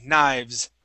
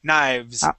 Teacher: V is there, but it's really quick